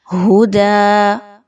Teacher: وقف کریں گے تو آپ نے دال کی 2 زبر کو دال کی 1 زبر اور الف میں بدل دیا، ہدا، اس طریقے سے وقف ہو جائے گا۔